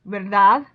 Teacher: you can hear that I stress the DAD more